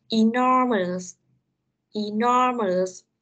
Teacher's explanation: cái từ này nó sẽ nhấn trọng âm ở âm thứ hai.